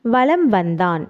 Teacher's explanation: ஒலிக்கிறது வளம் வந்தான் என்பதில் மகர மெய் எழுத்தை அடுத்து வகர எழுத்து வருவதால் மகர மெய்யெழுத்தானது தனக்குரிய அரை மாத்திரை அளவிலிருந்து குறைந்து கால் மாத்திரை அளவில் ஒலிக்கிறது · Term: மகரக் குறுக்கம்